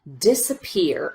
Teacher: if you notice this middle syllable we just rush through as quickly as we can